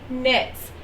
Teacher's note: In some words, the letters K, G, W, or B are silent, as in this sentence, Mary knits. Notice that K is silent. You don't hear the K sound. The first sound that you hear is the N in knits.